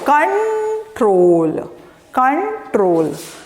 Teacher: the stress is on troll